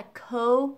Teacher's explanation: thiếu ở cái phần âm /l/ trước cái âm /d/ ở cuối á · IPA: /koʊld/